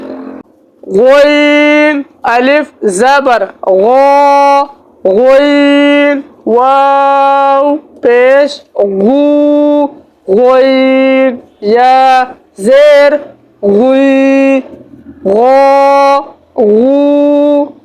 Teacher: इसको हम पूरी यानी मोटा पढ़ेंगे और इसकी आवाज़ जो है ऊपर से नीचे की तरफ आएगी, ठीक है, क्योंकि ग़ैन जो है हल्क के ऊपर वाले हिस्से से अदा होता है